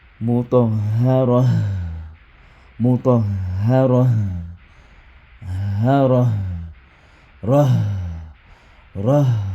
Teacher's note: l'arrêt sur le ta marbuta égale à l'arrêt sur le ha